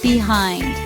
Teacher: Two syllables. Stress syllable is second. Behind meaning at the back of something. · Behind. 2 syllables. Stressed syllable is second.